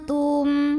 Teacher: nun sukunnya dibunyikan samar-samar siap-siap ke ta, tapi dengungnya masih sedikit ya, disertai dengung tapi dengungnya sedikit. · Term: ikhfa aqrab